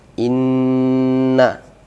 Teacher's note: Inna di sini ada tasydidnya. Ya, ini hukumnya adalah gunnah musyaddadah atau wajibul gunnah. Ya. Yang panjangnya 2 harakat atau lebih. Inna. Jadi tidak boleh dia dipendekkan bacaannya.